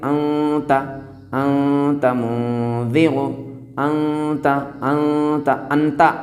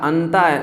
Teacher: تو نون ساکن کے بعد اگر حروف اخفا آئیں تو اس کے نون کو غائب کر دیں گے، نون کو ظاہر نہیں ہونے دیں گے اور ناک میں آواز لے جاتے ہوئے اس کو ادا کریں گے